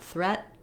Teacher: I'm going to say the T but not let the air out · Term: stop T